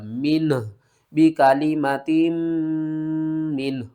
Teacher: last میں ہا کی آواز آئے گی اور یہ ہا بھاری ادا ہوگا